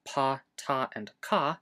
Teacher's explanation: In unvocalized plosives, like pa, ta, and ka, we start vocalizing later.